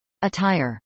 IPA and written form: əˈtaɪɹ (attire)